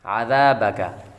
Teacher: ذال کو ہمیشہ نرمی کے ساتھ پڑھا جاتا ہے, نہ کہ سیٹی والے حروف کے ساتھ پڑھا جاتا ہے. اس کو سختی کے ساتھ نہیں بلکہ نرمی کے ساتھ ادا کیا جاتا ہے.